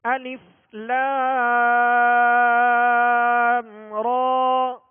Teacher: درست طریقہ یہی ہے کہ اس حرف کو الف الف الف یوں پڑھیں گے، اور ساتھ میں لام کے بعد الف مدہ ہے، میم کے اوپر جو سکون ہے یہ سکون اصلی ہے، سکون لازم ہے، لہذا یہاں مد لازم ہوگا لام پر. اور آگے را پر کھڑا زبر ہے، لہذا الف مدہ کے قائم مقام ہے، ایک الف کی مقدار میں کھینچ کر ادا کریں گے